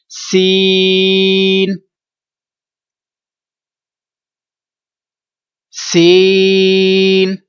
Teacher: سین ناک میں آواز لے جاتے ہیں تو درست نہیں ہے، غلط ہوگا. اس کو ہم نے 3 الف تک 3 سیکنڈ تک اس کو لمبا کرنا ہے اور ناک میں آواز نہیں جانے دیں گے.